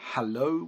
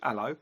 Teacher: one of the most common things that you'll notice about the way in which London people speak is that they drop their H's